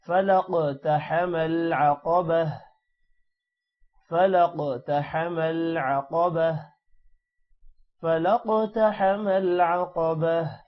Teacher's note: فلق قاف پر قلقلہ ہوگا اور قاف موٹا بھی ہوگا · قاف موٹا ہوگا اور جو لاسٹ میں تا ہے وہ وقف کی وجہ سے ہا میں کنورٹ ہو جائے گا